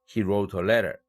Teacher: he 대강세 없죠. wrote 대강세 있죠. 2강세죠. a letter 마지막 내용이니까 대강세 1강세가 있죠. 그러면 대강세는 2개.